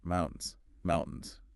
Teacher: Stress on the first part, mountains.